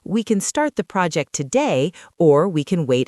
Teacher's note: Notice the stress on the word or.